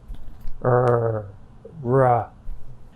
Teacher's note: It ends in a R sound, which is voiced.